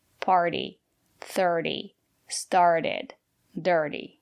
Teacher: We pronounce the letter T as a fast D.